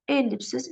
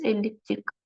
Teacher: ellipsiz sözündə vurğu ilk hecaya, elliptik sözündə vurğu sonuncu hecaya düşür